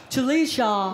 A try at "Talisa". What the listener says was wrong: No, Talisa. No, Talisa. No, there's no H. No, Talisa. Talisa. Talisa. No, Talisa. No, no H.